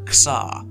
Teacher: In this environment, the K is a little bit difficult to enunciate and to hear clearly.